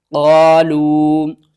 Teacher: چھوٹی مد ہے، مد منفصل ہے، تین الف کے برابر کھینچ کر پڑھیں گے